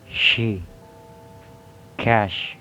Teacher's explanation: There is voiceless palato-alveolar fricative